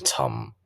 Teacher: the fourth is a like a falling sound because it goes down in Pitch